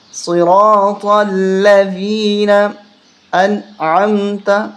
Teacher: جب بھی ذال آتی ہے تو زبان باہر نکال کے پڑھا جاتا ہے اس کو